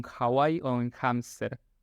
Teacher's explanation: como la H en inglés, que no tiene ese sonido fuerte de la garganta que es como la J nuestra, sino que es más suave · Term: el sonido de la H